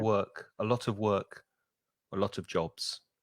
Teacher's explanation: the of almost disappears. You don't really hear it because it's weak.